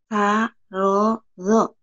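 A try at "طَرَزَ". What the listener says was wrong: Za. Oh, sa. Kedengarannya barodo. Barodo mah orang bodoh. Sa. Rodo. Sa.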